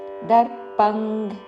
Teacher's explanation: దర్పం క వర్గములోని అనునాసిక ఉంగ్ ఉచ్చారణ